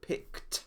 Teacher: if the last sound of the infinitive is unvoiced, it is pronounced t, as in picked.